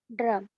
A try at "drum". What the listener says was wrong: No, I can still hear the R vibration. The R Vibration should not come. It should be drum.